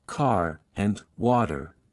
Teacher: pronounced the r sound strongly in all positions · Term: American accent, Rhotic accent